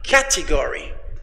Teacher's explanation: The first syllable, cat, is stressed.